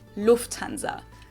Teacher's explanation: Say Lufthansa, but in German we say Lufthansa. So the emphasis is on the first syllable, Lufthansa versus Lufthansa.